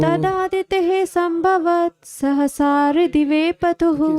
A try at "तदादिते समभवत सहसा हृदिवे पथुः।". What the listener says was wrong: संभव नहीं है, समभवत। तदादिते समभवत सहसा हृदिवे पथुः। समभवत। तदादिते समभवत सहसा हृदिवे पथुः।